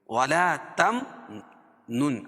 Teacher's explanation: ولا تم نون، اور نون ساکن کے بعد کیا ہے تو یہاں اخفاء حقیقی ہوگا، اس میں ناک میں آواز کو چھپا کر پڑھیں گے